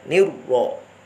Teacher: Jadi ni non kasrohnya tipis, tetapi roknya ini harus tebal ya.